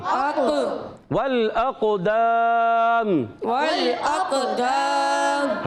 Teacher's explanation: حرف مدہ کے بعد میم کو آخر میں ساکن کر دیں گے، وہ بالاسکان بھی ہوگا، مد عارض بھی ہوگا، حرف مدہ کے بعد سکون عارضی بھی آ گیا تو مد عارض بھی ہوگا · واو کو لام سے ملانا ہے، لام کو ہلانا نہیں ہے، الف کو یہ الف نہیں حمزہ ہے، اور یہ اس کو قاف سے ملائیں گے، قاف عرف قلقلہ میں سے، عرف مستعلیہ میں سے بھی ہے، موٹا بھی پڑھنا ہے، قلقلہ بھی کریں گے، آواز آئے گی اقو، اق کیا آواز آئے گی؟